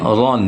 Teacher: Fathatain itu ro itu yang berharkat ganda atau dua atau fathatain seperti ron ya. Jadi ro dengan ron itu juga tafkhim atau tebal.